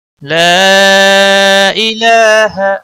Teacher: لا یہاں پر مد منفصل ہے، 3 سیکنڈ یا 3 الف کے برابر اس کو کھینچنا ہوگا۔